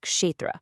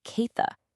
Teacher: that ksha sound is pretty complex, and in the Oriya that people were actually speaking, they'd already simplified it